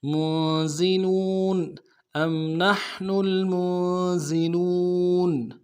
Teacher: حمزہ کو میم ساکن کے ساتھ ملانا ہے، میم ساکن میں غنہ کریں گے · ام نحن المنزلون، میم کو نون ساکن کے ساتھ ملانا ہے، نون ساکن میں غنہ کریں گے، زا کو سیٹی ہوگی، سیٹی باریک ادا کریں گے. لام کو واو کے ساتھ ملانا ہے، واو مدہ ایک مقدار میں کھینچیں گے، نون کو نم سے ادا کریں گے.